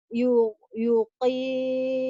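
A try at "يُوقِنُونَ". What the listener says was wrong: Yu-nya panjang. Yuqinun.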